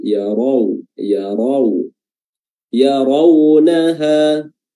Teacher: Waw sukun di sebelumnya ada ra yang fathah, raw ya, di sini juga memiliki sifat lin, dan ra-nya di sini dibaca tafkhim, dibaca tebal